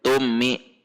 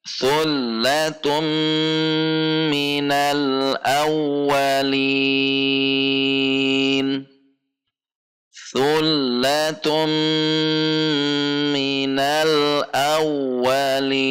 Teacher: Tun masuk ke mim, idgham bi gunnah harus dengung, tidak boleh tummi.